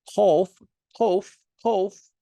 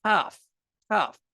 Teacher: Kof is more in the back of the throat. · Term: emphatic